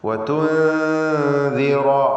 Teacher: നൂൻ സാക്കിൻ ശേഷം ദാല് ഇഖ്ഫാ ഹഖീഖി നൽകി നൂനിനെ അവ്യക്തമാക്കി മണിക്കണം. റായിന് തഫ്ഖീം.